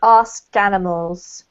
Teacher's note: connect up the K and the A, so join them together, so you end up with ask animals.